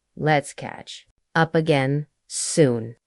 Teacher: The word soon usually rises gently at the end. It creates a feeling of hope, not distance.